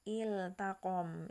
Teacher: Iltaqom di sini tidak dibaca ittaqom gitu, maka tetap dibaca iltaqom, jadi la-nya jelas. Jangan sampai kita terlalu cepat bacanya menjadi ittaqom gitu, salah. Tapi lamnya harus jelas. Ini yang dimaksud kata idharkanlah atau jelaskanlah huruf-hurufnya ya, yaitu iltaqom, jangan ittaqom gitu ya.